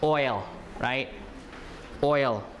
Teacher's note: That one is a diphthong, right? Oi, oi and l.